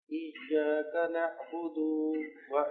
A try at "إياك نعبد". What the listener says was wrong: اس کو لمبا نہیں کرنا. ایاک نعبد،